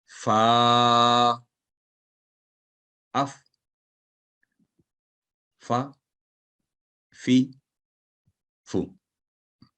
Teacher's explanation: اوپر والے دانتوں کو نچلے ہونٹوں کے تر حصہ پر لگانے سے یہ حرف ادا ہوتا ہے